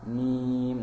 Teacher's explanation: mimnya ini dibaca 6 harokat. Ini adalah mad arid disukun.